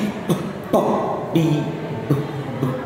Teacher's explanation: So a combine both, something called the balabia, the two lips coming together and, you know, quickly releasing the air